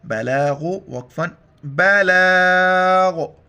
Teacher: آخر میں غین کو موٹا کرنا ہے اور غین کا ساؤنڈ آ جائے